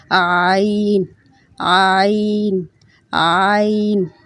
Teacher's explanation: یہ گلے سے ادا ہوگا، گلے کے بالکل وسط سے